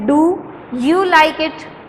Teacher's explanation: ڈو پہ ہم نے سٹریس کیا، ڈو کو تھوڑا سا اونچا بولا، یو لائک اٹ بالکل سمپلی آرام سے بول دیا، تو یہ ہے انٹونیشن۔